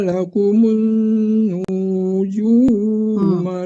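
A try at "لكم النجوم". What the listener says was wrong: Nunya nggak panjang ya Pak. Wa huwal ladzi ja'ala lakumun nujum. Tasdid itu dengung aja, tapi kan dipanjangkan nunya.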